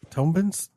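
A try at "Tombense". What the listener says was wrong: I don't think you pronounce the B, but I don't know that.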